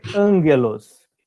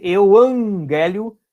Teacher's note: A gente vai escreve euagélio, mas se lê euangélio porque tem 2 gamas. Então, toda vez que tiver 2 gamas juntos, o primeiro gama tem som de N